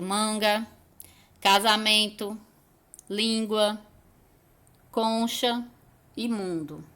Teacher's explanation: o encontro de uma vogal com m ou n que faz um som nasal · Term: dígrafo vocálico